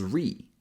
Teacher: an r sound followed by a tense e sound